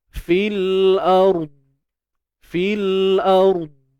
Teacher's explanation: Dan dad ni dia bersifat tebal kan. Bunyi dia gagah sikit lah. Walaupun dengar tak dengar tapi bunyi dia gagah. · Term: huruf dad